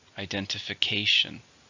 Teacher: 6, stresses on the 5th syllable.